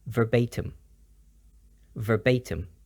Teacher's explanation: it's pronounced with the ba as a b sound and the I as a u sound